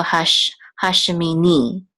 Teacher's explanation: the accent is on the last syllable